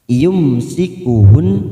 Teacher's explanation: mim sukun idhar safawi kita baca jelas tanpa mendengung